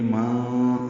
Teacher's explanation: نون ساکن ہے اور اس کے بعد دال آنے کی وجہ سے من نہیں پڑھیں گے، ماں اخفا کریں گے